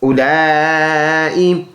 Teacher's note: لام مد کڑی زبر لا، 4 الف کی مقدار لمبا کریں گے.